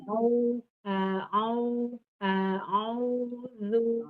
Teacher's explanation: Kemudian ainnya, kalau A dari pangkal tenggorokan, ainnya ke tengah tenggorokan dan tidak naik ke hidung, tapi dari tengah tenggorokan. Panjangkannya, memanjangkannya tidak di hidung juga, tidak di al-khaysum, tapi di al-jauf, di rongga mulut. · Panjangkannya, memanjangkannya tidak di hidung juga, tidak di al-khaysum, tapi di al-jauf, di rongga mulut. Au, itu fokus mulut.